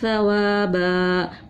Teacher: دونوں کو ایک الف کے برابر کھینچا کیونکہ دو زبر کی تنوین تھی، وقف کرتے ہیں تو ایک الف سے بدل دیتے ہیں اس کو، وقف کا نام ہے وقف بالابدال۔